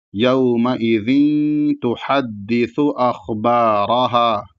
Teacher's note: تو یومئذ تحدث اخبارہا، اخبار میں یہاں پر بھی خا ساکن ہے، خا موٹا ہوگا، با کے ساتھ الف ہے، اس کے بعد را کو موٹا پڑھا جائے گا کیونکہ را کے اوپر زبر ہے، اور اس کے بعد اخیر میں ہا کے ساتھ الف ہے۔ تو اس کو آرام سے پڑھیں گے اور ایک الف کے برابر کھینچ کے رکیں گے